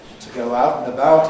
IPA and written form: tə ˈgəʊ ˈaʊt n̩ əˈbaʊt (to go out and about)